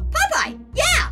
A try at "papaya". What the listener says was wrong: All in one word. Say it with me. Papaya.